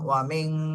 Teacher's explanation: ومن شر النفاثات في العقد ومن شر النفاثات في العقد ওয়াও জবর ওয়া, মিম নুন জের মিং, ওয়া মিং। নুন সাকিনের পরে এখানে ইকফার হরফ শিন এসেছে, এজন্য নুন সাকিনে ইকফা গুণা করতে হবে।